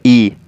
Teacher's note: ई मुख के अगले भाग से बोला जाता है